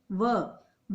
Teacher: व जब हम बोलते हैं तो हमारा दांतों और होठ दोनों मिलते हैं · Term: दंतोष्ठ